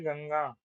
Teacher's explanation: नाक की सहायता से मुख में उच्चारित होने वाले वर्ण अनुनासिक हो गया